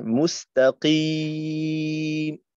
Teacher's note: কফের উচ্চারণটাকে একটু ধাক্কা দিয়ে করা নিজ মাখরাজ থেকে, যেন একটু উপরের দিকে উঠে না যায়